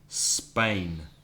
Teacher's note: Many people, obviously in Spanish, it's España because it has the E at the beginning. But even when Spanish speakers say Spain in English, they put an E at the beginning.